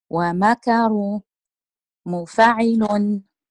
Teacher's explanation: النبر على حركة الميم